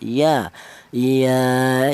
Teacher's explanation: Untuk huruf ya keluarnya huruf berasal dari tengah lidah ya